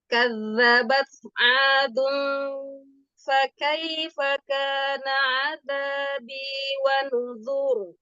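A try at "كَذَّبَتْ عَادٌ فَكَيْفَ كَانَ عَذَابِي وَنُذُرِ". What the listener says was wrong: Ahsan. Kaifa. Sudah lebih baik.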